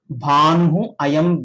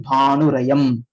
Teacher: This Visarga changes to r. Bhanuhu ayam will become Bhanurayam.